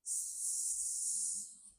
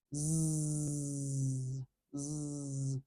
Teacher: your face, your mouth is in the exact same posture. The only thing you're doing differently is instead of no vibration at your vocal folds, at your vocal cords, at your voice box, you're making vibration there